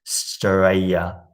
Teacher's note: You can just say Australia, I think. Australia, like with no L.